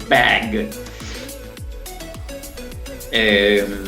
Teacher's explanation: La B también fuerte en inglés. Ba, ¿sí? Explota así.